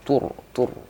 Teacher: sifatnya yang tidak dimiliki huruf lain adalah sifat takrir atau sifat bergetarnya ulang berulang-ulang digetarkan